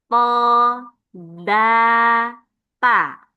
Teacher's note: tarful lisan ujung lidah kena pangkal gigi seri atas. Jadi dia di belakang gigi seri atas ini. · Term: torful lisan